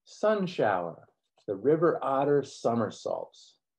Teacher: We also hear R controlled endings to three of the words, shower, otter, and part of somersault